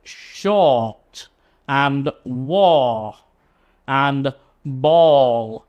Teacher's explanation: So it's important you don't get confused with these words and say ball and war and shot, because it's a much longer sound. It's the O sound.